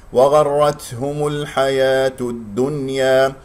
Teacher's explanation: الدال شديدة مجهورة لا تجعلها كأنه تاء أو فيها نفس